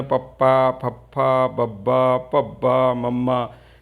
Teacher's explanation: ਪੱਪਾ ਪਵਰਗ ਦੋ ਹੁੰਠੀ ਆ, ਜਦੋਂ ਦੋ ਬੁੱਲ ਜੁੜੇ ਨੇ